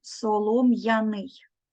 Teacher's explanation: маємо твердий звук м буква я позначає два звуки